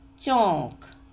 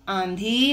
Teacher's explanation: जो अनुनासिक लगे हैं उनमें नाक और मुंह दोनों से हवा निकल रही है